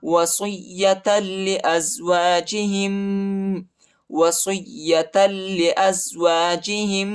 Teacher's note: یا پر جو ہے شد آیا ہے، یا کو شدت کے ساتھ سختی کے ساتھ پڑھیں گے، اور تا کو لام کے ساتھ ملائیں گے، ٹھیک ہے۔